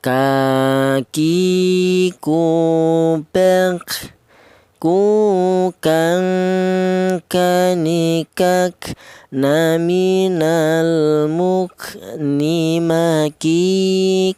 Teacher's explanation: huruf kaf ini keluarnya huruf berasal dari pangkal lidah atau lidah bagian belakang.